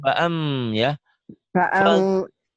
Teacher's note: Jangan fa'ang, tapi jangan eng ya. Bunyi M tetap.